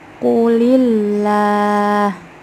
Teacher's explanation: Lam jalalah yang dibaca tarkik terjadi ketika lafaz Allah didahului oleh huruf yang berharokat kasroh.